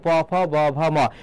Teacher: ওষ্ঠ মানে ঠোঁট, প থেকে কি ম পর্যন্ত